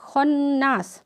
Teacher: خا جو ہے حروف مستعلیہ ہے، اس لیے اس کو ہونٹوں کو گول کر کے پڑھا جا رہا ہے، اور نون میں تشدید ہے تو پھر یہاں پہ گننا ہو رہا ہے.